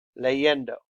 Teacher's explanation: the stress falls on the next to last syllables. Leyendo, on the E.